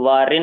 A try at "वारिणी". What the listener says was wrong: अटकुक से नत्व है।